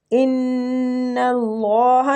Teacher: ان اللہ نون مشدد ہے، غنہ کریں گے ، اللہ کے لام کو ادھر بھی ہم پور پڑھیں گے،